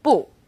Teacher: We have a tone alert for 不. When used on its own, 不 is fourth tone